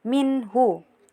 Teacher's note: nun sukun bertemu dengan hu jadi dibaca jelas, minhu. Lanjut, di sini terdapat juga hukum idhar syafawi karena mim sukun bertemu dengan za jadi dibaca jelas, bihim za. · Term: idhar halqi